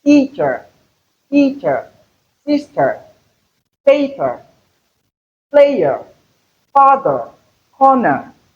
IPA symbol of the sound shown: ə